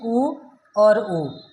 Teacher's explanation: ऊ और ऊ, ये हमारे बोले जाते हैं ओष्ठ से